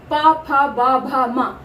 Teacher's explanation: दोनों होंठ आपस में टकरा के छूकर बाहर आते हैं शब्द अक्षर प फ ब भ म। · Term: पा वर्ग